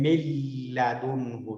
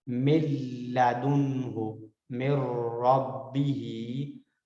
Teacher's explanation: और लाम और रा की एक मिसाल देख लेते हैं मिल्लादुन्हु, यहाँ पर हमने पढ़ा था कि लाम रा में मर्ज तो होगा लेकिन गुन्ने के बगैर होगा, गुन्ना नहीं किया जा सकेगा। मिल्लादुन्हु मिर रब्बिही, तो ये लाम और रा की मिसाल मर्ज के साथ थी।